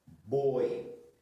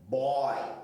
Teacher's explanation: Boi de tombo fechado. Boy de tombo aberto.